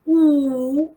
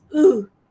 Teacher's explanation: The lips are closely but loosely rounded. You can say directly the lips are loosely rounded. · No firm contact being made between the tongue and the upper molars. The lips are closely but loosely rounded.